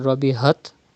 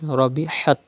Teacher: it is Ha, pronounced from the middle part of your throat. Do not read Rabihat, but it is Rabihat.